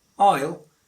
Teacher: So I'll, as you've seen, I is a pronoun and will is the auxiliary. So you don't have to stress it, so you have to use the weak form ill.